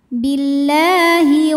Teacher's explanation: karena huruf lam berbaris fathah panjang maka dibaca panjang lamnya dua harakat